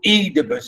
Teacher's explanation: and stress on the first syllable